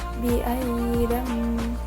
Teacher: dua harakat waal maudatuilat ayat keaytilat pada bacaan biamam nah ini terdapat hukum tajwid ikqlab karena ada nun mati bertemu dengan ba cara bacanya berdengung